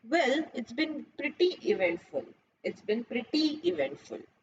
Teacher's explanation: I will stress more on pretty eventful